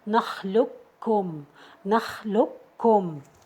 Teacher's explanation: So we're gonna merge the qaf into the kaf